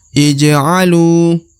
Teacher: Huruf lu dibaca 2 harokat, ya, karena di depannya terdapat waw sukun atau waw mati, maka lu harus dipanjangkan 2 harokat.